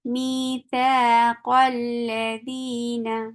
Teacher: اب اس قوف کو ہم لام کے ساتھ ملا کے پڑھ دیں گے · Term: حمزۃ الوصل